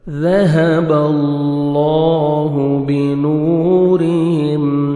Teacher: اللہ سبحانہ وتعالیٰ کے نام سے پہلے زبر آ رہا ہے، لام کو اپنے پر کرنا ہے، موٹا بھی کرنا ہے، اور 1 سیکنڈ آپ نے کھینچنا بھی ہے